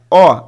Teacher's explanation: अ आप उच्चारण करके देखिए, अ का उच्चारण स्थान कंठ हो जाएगा, ठीक है, कंठ हो जाएगा।